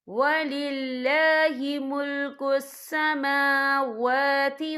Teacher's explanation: سماوا دونوں جگہوں پہ کھڑی حرکات ہے، تو ہم یہاں 2 یا 3 حرکت کے برابر کھینچ کے پڑھیں گے.